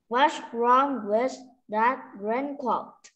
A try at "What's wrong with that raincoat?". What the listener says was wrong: Đúng rồi, lên giọng một xíu. Raincoat, good job.